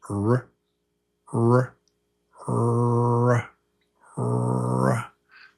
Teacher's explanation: So, there's no tap. The tongue is back. The tongue is back in your mouth. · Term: the sound of R